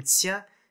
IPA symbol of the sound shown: tɕ